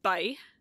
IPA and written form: bʌi (bye)